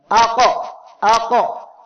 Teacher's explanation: এই হরফগুলো সাকিন অবস্থায় উচ্চারণের সময় তাদের মাখরাজের সাথে শক্তভাবে ধাক্কা লাগার কারণে অতিরিক্ত একটা আওয়াজ হবে। এই অতিরিক্ত আওয়াজকে কলকলা বলা হয়।